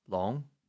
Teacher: long here is with a second tone